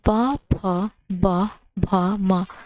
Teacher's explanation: प वर्ग ओष्ठ से उच्चारित होने वाली ध्वनियां हैं।